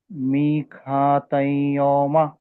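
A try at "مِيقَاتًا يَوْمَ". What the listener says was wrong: ఇదిగాం చేయాలి, ఇంకా కొంచెం గున్నా చేయాలి. గున్నా కొంచెం మంచిగా చేయాలి. ఇదిగాం చేశారు, గున్నా కొంచెం మంచిగా చేయాలి.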